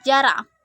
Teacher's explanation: Bunyi J dengan ciri-ciri hidup, oral, laminopalatal, afrikatif